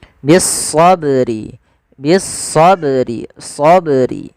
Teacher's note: Qalqalah yaitu bacaan yang dia memantul